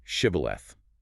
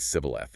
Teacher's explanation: The enemy tribe's dialect couldn't pronounce the sh sound. They said sibboleth instead.